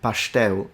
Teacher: S, like in English, sun. Instead, in the Carioca accent, for what I can see here, it's more of a sh, pastel. It's interesting because that's what happens in some dialects in Italy in the south.